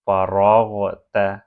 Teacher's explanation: را اور غین دونوں ہیوی لیٹرز ہیں، ان دونوں کو ہیوی پروناؤنس کریں